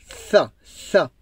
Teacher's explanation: Le bout de la langue qui sort un petit peu entre les dents.